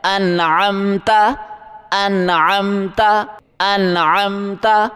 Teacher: حمزہ نہیں پڑھیں گے، عین پڑھیں گے، گلے سے زور لگا کے نکالیں